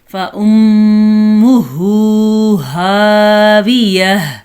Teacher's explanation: آپ کو آواز آ رہی ہے غنّے کی اور ہا کے مخرج کی